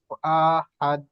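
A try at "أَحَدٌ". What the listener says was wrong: আহাদ, হামজাটি টান হবে না, হামজা জলদি। আহাদ।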